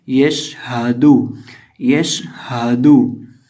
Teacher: जुबान की नोक सामने वाले ऊपर के 2 दांतों की जड़ से लगने से दाल अदा होता है